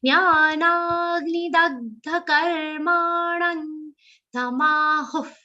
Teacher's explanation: Jnanagni, na is a long sound and it has a stress of ga.